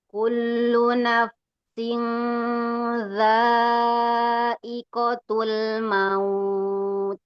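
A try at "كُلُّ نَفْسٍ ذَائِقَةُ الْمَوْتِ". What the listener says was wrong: Boleh diulang Bu di huruf fa sukunnya ya. Nafsil. Naf dia lebih mengalir lagi. Kullu nafsin dha'iqatul maut. Nafsin, nafsin.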